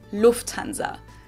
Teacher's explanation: In English, people usually say Lufthansa, but in German, we say Lufthansa. So the emphasis is on the first syllable, Lufthansa versus Lufthansa.